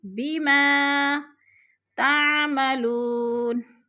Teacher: وہ ساکن سے پہلے لام کے اوپر پیش ہے تو وہ مدہ، وہ مدہ کو ہم نے 1 الف 2 حرکات کے برابر لمبا کر کے پڑھنا ہے۔